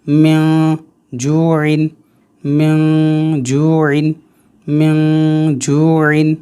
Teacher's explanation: جیم بھی حروف اخفا ہے، لہٰذا نون ساکن میں اخفا ہوگا، یعنی ناک سے پڑھیں گے۔